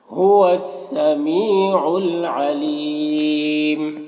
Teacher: یہاں پر وقف کی صورت میں مد عارض وقفی ہوگا